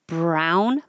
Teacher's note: first before you release your lips with the B so Brown my tongue is already curled back and I'm pulling it down and back · you can make your R position first before you release your lips with the B so Brown my tongue is already curled back and I'm pulling